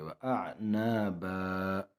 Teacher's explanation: وقف کے حالات میں ایک زبر کو پڑھیں گے اور ایک کو گرائیں گے. وَأَعْنَابًا، اور جب وقف نہیں کریں گے تو ایسے پڑھیں گے.